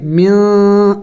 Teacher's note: کولو من دیکھیں نون ساکن ہے, اخفا کریں گے, ناک میں آواز چھپائیں گے نون کی, یعنی ظاہر کر کے نہیں پڑھیں گے. من نون کو چھپائیں گے ناک میں, من اس طرح پڑھیں گے.